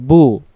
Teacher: বা অক্ষর যখন পড়বো 2 ঠোঁটে মিলিত হয়, বা পেশ বু, 2 ঠোঁটটা লাগবে বু।